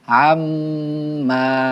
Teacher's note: আইন মিম জবর আম, ওয়াজিব গুন্না। মিমের উপর তাসদিদ হইলে গুন্না করিয়া পড়িতে হয়, ইয়াকে ওয়াজিব গুন্নাহ বলে। যেমন আইন মিম জবর আম, মিম আলিফ জবর মা, আম্মা।